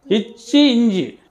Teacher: அடுத்து இச்சி இஞ்சி, இது வந்து பாத்தீங்கன்னா உங்களுக்கு இச்சி இஞ்சி நாவின் இடை அன்னத்தின் இடையில் பிறக்குது